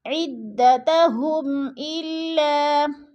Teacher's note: عدتہم، الا ہم پہ اظہار شفوی ہو رہا ہے، مین ساکن کے بعد آگے حروف حلقی میں سے حمزہ آ گیا ہے تو ادھر اظہار شفوی ہے یعنی غنہ نہیں کریں گے، لفظ کو ظاہر کر کے پڑھیں گے